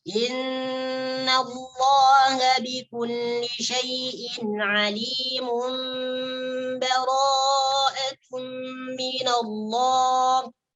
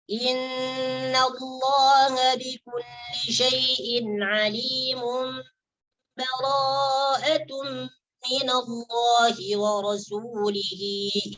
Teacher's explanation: Maksudnya adalah tanwinnya dimasukkan ke dalam huruf ba. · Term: idgham